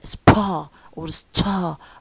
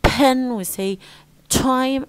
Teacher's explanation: was no the the B the the lose the aspiration featur they are no longer aspirated why because of the S sound that comes before them which doesn't give them the chance to be aspirated as they